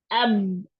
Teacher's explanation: बा का मखरिज अगर दो होंठ हैं आपके तो दोनों होंठ जो ही आपस में टच करेंगे, अब मखरिज बंद हो गया, आवाज मुंह के अंदर ही रुक गई।